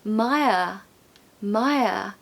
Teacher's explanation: no R pronunciation at the end.